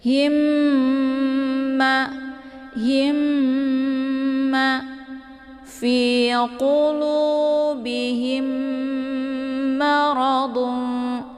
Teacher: Tapi yang benar itu ditekan dulu haknya, kemudian ditahan ya, langsung leburkan suaranya ke mim yang kedua ya, mim yang bertasydid. Kemudian ma itu dibaca pendek ya, ma ya, lembut, bukan ma ya, tapi ma.